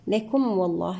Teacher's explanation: الميم مع الواو هنا إظهارا شفويا